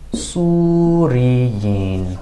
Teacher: we're definitely not going to hear that vestigial vowel at the end, that fatha